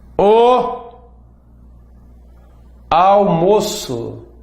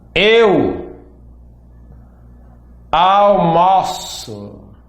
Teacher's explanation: O almoço fechado. Eu almoço aberto.